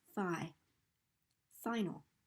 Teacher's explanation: the vowel in the stress syllable is clear so we can really get the i sound here phi final and the stress syllable has a higher pitched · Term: stressed syllable